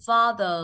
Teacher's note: Nhưng anh Mỹ nó sẽ kéo chữ ờ ra